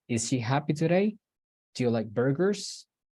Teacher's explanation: I noticed that at the end there is a tiny rising in the intonation